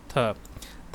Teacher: ये दंत में भी आता है, महाप्राण में भी आता है और स्पर्श व्यंजन में भी आता है